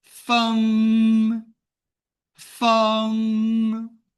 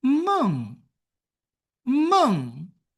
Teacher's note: ng, which means you need to use your root of tongue to touch inside of your mouth